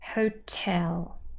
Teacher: Here, the second syllable is stressed, so we have the apostrophe just before.